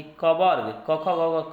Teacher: कवर्ग क ख ग घ कंठ से होता है। आप पढ़ चुके हैं क ख ग घ का उच्चारण स्थान कहाँ से होता है, कंठ से होता है।